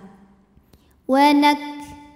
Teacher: yaitu sifat hams dari segi keluar tidaknya angin yaitu keluar angin ketika kafnya sukun maka anginnya keluarnya belakangan setelah keluar suara